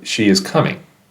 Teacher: a statement intonation the pitch typically Falls at the end of a sentence